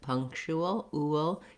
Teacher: when I'm moving from the oo to the schwa, ool, there's a little bit of a W glide in there. You don't have to insert it intentionally.